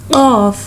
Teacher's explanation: We can read of by touching the last part of our tongue to the soft palate